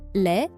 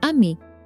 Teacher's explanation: Les on its own, the S is completely silent.